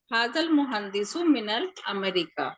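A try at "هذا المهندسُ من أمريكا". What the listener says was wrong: मिनल, मिनल किधर आ गया?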